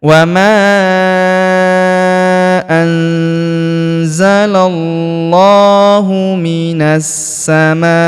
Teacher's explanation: huruf lamnya ini kita tahan dan tekan karena terdapat tanda tasdid di atasnya dan kita panjangkan dua harakat karena alif kecil di atasnya ya. · Perhatikan huruf na langsung sambung ke huruf sa yang berharakat tasydid. Langsung masuk ke sini kita tahan dan tekan karena terdapat tanda tasdid di atasnya ya.